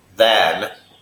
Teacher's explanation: Than is a TH word where you put your tongue under your front teeth. Than. It's not D, it's than.